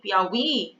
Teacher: a sílaba forte é a última sílaba. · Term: oxítona